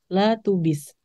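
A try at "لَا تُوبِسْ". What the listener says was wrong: La tu bis panjang.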